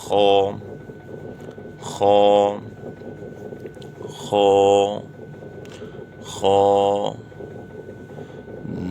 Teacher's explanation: حلق کے شروع سے جو منہ کی طرف ہے، جو حلق کا ابتدائی حصہ ہے